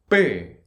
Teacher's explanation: It's higher pitch, but it's not aspirated. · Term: double consonant